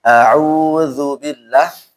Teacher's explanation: Auzu enggak boleh ada gun ghunah.